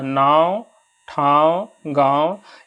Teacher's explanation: नाक से आपको झंझनाहट की आवाज आएगी अर्थात उच्चारण यहां पे हम लोग नाक से कर रहे हैं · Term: अनुनासिक